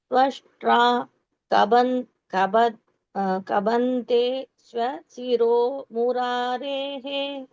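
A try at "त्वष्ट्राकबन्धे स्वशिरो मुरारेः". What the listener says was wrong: Correct.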